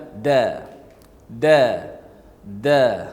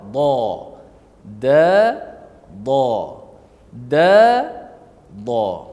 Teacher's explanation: Da daripada hujung lidah, da daripada tepi lidah makhrajnya.